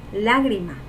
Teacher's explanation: la sílaba tónica sería la y es una palabra esdrújula